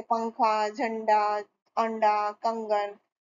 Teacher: बाद और व्यंजन से पहले होता है अनुस्वार का उच्चारण नाक से होता है